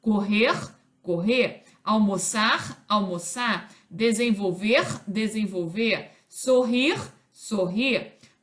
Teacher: nos infinitivos verbais correr correr almoçar almoçar desenvolver desenvolver sorrir sorrir quando suprimimos alongamos a vogal final · Em todas as regiões do Brasil, esse R pós-vocálico, independentemente da forma como é pronunciado, tende a ser suprimido, especialmente nos infinitivos verbais, correr, correr, almoçar, almoçar, desenvolver, desenvolver, sorrir, sorrir. · Quando suprimimos, alongamos a vogal final e damos mais intensidade a ela. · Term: supressão do R